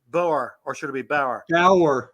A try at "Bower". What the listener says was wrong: It's not like the German farmer. It's B-O-W. It's not B-A-U-E-R. It's Bauer. B-O-W-E-R.